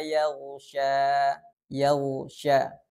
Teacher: Ghain dalam keadaan sukun dan huruf sebelumnya berharokat fathah sehingga bunyi sukunnya itu tebal dan aliran suara atau rokhawahnya jangan sampai terputus. Kesalahan yang sering terjadi ketika kita membacakan huruf ghain ini tidak tepatnya makhraj, kadang terlalu ke tengah atau terlalu keluar makhrajnya.